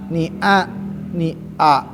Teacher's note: nun memberikan kontaminasi menularkan huruf ngirung ke a